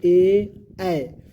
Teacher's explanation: चलिए अब जानेंगे कंठ्य तालव्य, मतलब कंठ से भी बोलते हैं और तालव्य से बोलते हैं। जैसे देखिए एक कंठ से भी बोलते हैं और तालु से, दोनों को मिलाकर बोलते हैं ए, तो इसको कंठ तालु बोलेंगे, कौची, कंठ तालु मिल गया।